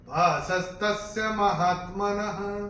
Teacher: न के बाद जो विसर्ग आ रहा है चरण की समाप्ति पे आ रहा है, उसका उच्चारण केवल और केवल ह ही होगा